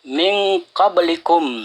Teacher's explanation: nun mati ketemu qaf itu disebut ikhfa. Ya, cara membacanya itu samar-samar antara izhar dan idgham